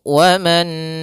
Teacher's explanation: Nun yang pertama dimasukkan kepada Nun yang kedua dan ditahan maka kita masukkan dahulu wanu ya kemudian ditahan dulu sebanyak e · ada nun sukun bertemu dengan huruf nun, maka nun yang pertama dimasukkan kepada nun yang kedua dan ditahan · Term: Idgham bighunah, idgham bi gunnah